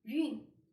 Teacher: So with a fourth tone, it's a falling tone.